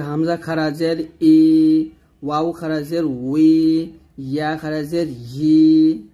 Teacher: হামজা খারাজের ই হলকের শুরু থেকে, ওয়াও খারাজের উই দুই ঠোঁট গোল করে ঠোঁট থেকে আনছি, আর ইয়া খারাজের ই জিহ্বার মধ্যখান উপরতলার সঙ্গে লাগিয়ে, এই তিনটে উচ্চারণ কিন্তু আলাদা হবে।